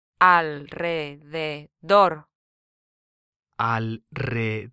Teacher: This word ends in an R, so the last syllable is stressed.